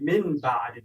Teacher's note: دا و اقلاب چې که چیرې له ساکن نون او یا هم له تنوین څخه د با توری راشي نو موږ هلته اقلاب کوو، یعنې د نون توری موږ په میم باندې تبدیلوو او غنه هم ورسره کوو